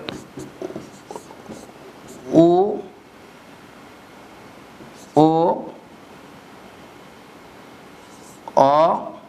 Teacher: উ ও অ, এই 3টি ধ্বনি উচ্চারণ করে জিহ্বা পেছনের দিকে ব্যাক করে, এই কারণে পশ্চাৎ স্বরধ্বনি বলে।